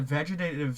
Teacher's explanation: the first time I said vegetative, I did not aspirate any of my TE's